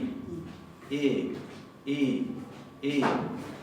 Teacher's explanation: ponemos la boca como para pronunciar una E, pero adentro decimos una I